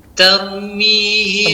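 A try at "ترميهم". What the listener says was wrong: Tebalkan lagi, tebalkan. Taru. Kurang, tebalkan lagi. Taru. Oke, dengan cara lidah menaik, lidah belakang ke atas, kemudian lidah depan menempel kepada gusi. Taru, nihim.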